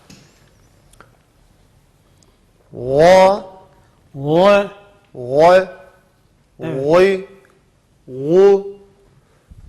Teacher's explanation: Rühvedir. Yumuşak ve akıtarak okunur. Müstaliyedir. Kalın okunur.